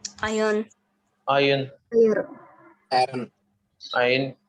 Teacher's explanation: There is no r. Okay. R sound is not there. It is Silent.